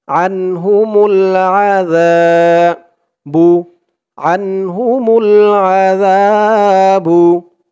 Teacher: জালের উচ্চারণটা একদম নরম পাতলা হবে, জিহ্বার মাথা উপরের দাঁতের মাথার সাথে লাগবে জালের উচ্চারণটা করার সময়।